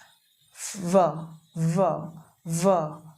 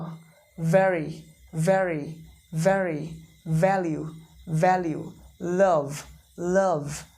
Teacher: इसमें भी lower lip लगेगा, इसमें भी लोअर लिप लगेगा, नीचे का लिप ऊपर का दांत टच करिए इस तरीके से, वाइब्रेशन के साथ बोलेंगे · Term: व साउंड